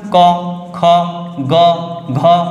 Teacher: ক হচ্ছে অল্পপ্রাণ আর গ হচ্ছে অল্পপ্রাণ আর এটা খ হচ্ছে মহাপ্রাণ ঘ হচ্ছে মহাপ্রাণ